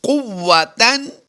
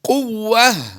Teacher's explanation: گول تا کو ہم نے وقف میں ہا ساکن سے بدل دیا ہے